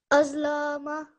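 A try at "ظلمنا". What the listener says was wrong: This lam, you're making a mistake here. What you're saying is azlama. थोड़ा सा लंबा हो जाता है.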